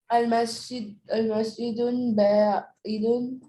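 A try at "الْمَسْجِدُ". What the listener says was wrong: मस्जिदू होगा बेटा, अल मस्जिदू होगा, ये गलती से तनवीन लगा हुआ है यहाँ पे। कभी एक वर्ड पे दोनों चीजें नहीं आ सकती, तनवीन भी आए अलिफ लाम भी आए, वो गलती से लग गया।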